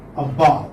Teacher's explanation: So the stress would come on the second syllable.